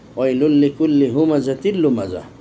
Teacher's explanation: প্রথমে আমরা দেখতে পাচ্ছি তানবিন, তানবিনের পরে লাম। তো তানবিনের পর লাম হলে ইদগাম হয়, ক্ষেত্রটাকে বলা হয় ইদগাম নাকিস, অপরিপূর্ণ ইদগাম।